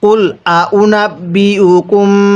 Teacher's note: মিম সাকিনের মধ্যে গুন্নাহ করবেন, কারণ মিম সাকিনে পরে বা থাকলে গুন্নাহ করে পড়তে হয়